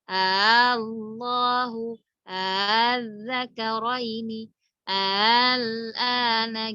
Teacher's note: Tashil itu kita mengucapkan membacanya itu ringan gitu. Diringankan antara hamzah dan alif itu kayak nggak jelas gitu ya.